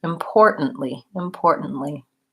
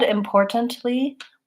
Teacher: you don't want to leave the T out but you do want to make it a stop T import N and then another stop T importantly with the stress